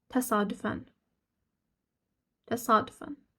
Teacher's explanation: sadəcə a-nın üstünə vurğu düşür deyə bizə elə gəlir ki, uzanıram uzanmır